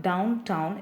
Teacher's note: The word downtown is a spondee with the stress syllable of down stressed, town stressed. ஸோ 2 stressed syllables வருதுன்னா அதுக்கு பேர் என்னது, it is said to be in spondaic.